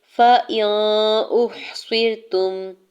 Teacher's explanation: فا کی زبر کو جلدی سے ادا کرنا ہے، حمزہ کے زیر کو نون ساکن کے ساتھ ملاتے ہوئے اخفا کرنا ہے